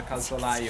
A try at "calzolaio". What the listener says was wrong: No, you have to put an L there, otherwise it sounds like a swear word.